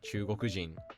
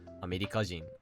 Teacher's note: the accent always shifts to drop after the country name regardless of what the original accent of the country was